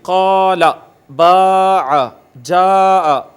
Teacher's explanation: الف مدہ کو اوپر کی طرف کھینچتے ہیں